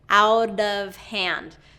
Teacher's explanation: So that T becomes a D, a flap T or a tap T, as I like to call it.